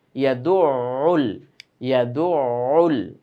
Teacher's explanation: একটু গলার মধ্যে চাপ দিয়ে ধরবো আওয়াজটাকে, তাহলে আইনের আওয়াজটা সুন্দর শোনাবে